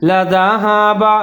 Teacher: وَلَوْ شَاءَ اللَّهُ لَذَهَبَ لام کے اوپر زبر ہے, زال کا خیال رکھنا ہے, اس کو زا نہیں پڑھنا. زال کے اوپر زبر ہے, لَذَهَبَ ہا کے اوپر زبر ہے, با کے اوپر زبر ہے, لَذَهَبَ بِسَمْعِهِمْ.